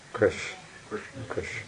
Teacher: The tongue hits the back and the upper palate.